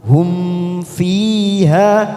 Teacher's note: namanya pecahan izhar syafawi kita baca jelas tanpa mendengung